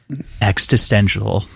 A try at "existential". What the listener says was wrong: you also put an extra t in there